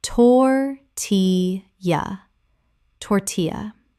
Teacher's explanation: the L L making a Y sound as in Spanish